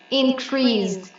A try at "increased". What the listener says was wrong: increased. Increased. So at the end, I need to hear the d. Increased, increased.